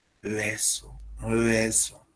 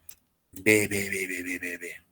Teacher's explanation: esta B es una bilabial, entonces se tiene que pronunciar más bien como B